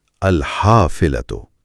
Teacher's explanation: اس میں ہا کو ذرا حلق سے ادا کرنا ہے